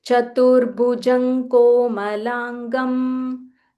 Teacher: you are ending in Nga and then you're starting with Ka. So it starts from the same point from your throat.